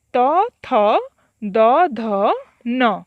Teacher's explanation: एगुड़िकर उच्चारण स्थान दंत अर्थात ऊपर दंतर तल पाख, तेणु एगुड़िक कुहा जाए दंत वर्ण